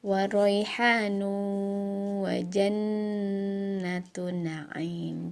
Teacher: Jannatu ya, ada nun bertasydid, harus ditahan dulu.